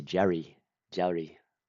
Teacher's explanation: it does have like this really in between R, in between D sound